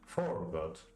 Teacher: The most common foot in English is known as a jump, which is an unstressed syllable followed by the stressed one. Stressed, unstressed, stressed, unstressed.